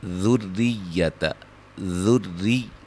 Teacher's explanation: را کو باریک، ٹھیک ہے جی، اور ذا کو را سے اور را کو یا سے ملانا ہے